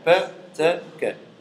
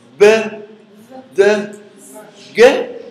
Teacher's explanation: There is no vibration in the vocal cords. That's why they are called voiceless.